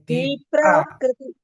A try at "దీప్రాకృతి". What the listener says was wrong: కానీ ఆ ఇన్ఫ్లుయెన్స్ దాని మీద ఉండిపోయి కృ కూడా అలా అయిపోతుంది. కానీ అలా రాకుండా చేసుకోవాలి. దీప్రాకృతి దీప్రాకృతి అలాగా. దీప్రాలో కూడా పకారం ఒక 2-3 ఉన్నట్టుగా చెప్పండి.